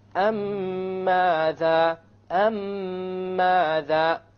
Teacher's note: You have a ghunna on the meme, and you will make the merging or the idgham, and there will, in the Quran it will be written with a shadda, so you will even know that there will be a merging here. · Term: idgham shafawi